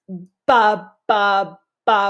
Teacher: we use the two lips to block the air